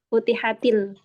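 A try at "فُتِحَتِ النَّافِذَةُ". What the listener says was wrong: Oh, til kan dia huruf syamsiyah. Futihatin nafidatu.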